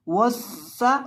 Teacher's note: सीन के अंदर सिटी की आवाज़ पैदा करेंगे